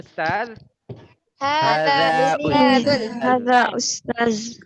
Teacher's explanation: Ustaz lidahnya diapit atas bawah ya